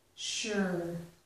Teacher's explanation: So this S here, S-U, is making a sh sound.